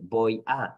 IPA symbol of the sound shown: b